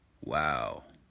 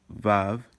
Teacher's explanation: it's pronounced as W, but in some dialects, including modern Israeli Hebrew, you'll have V.